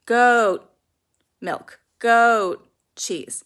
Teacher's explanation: The main important part of the sound is that the OA should be elongated.